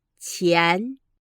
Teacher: the second is a rising town the picture of your voice rises from the lower point to a higher point